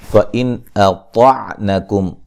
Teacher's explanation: نون ساکن کا اظہار ہے، طا کو موٹا ادا کریں گے